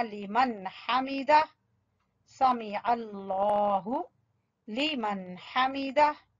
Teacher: लिमन हमीदा, नून को फौरन हा, कोई गुन्ना वगैरह नहीं करना